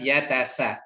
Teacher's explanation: untuk sin ini akan terdengar desis daripada sifat hamasnya, dan yang dominan tentu adalah sifat sofirnya ya.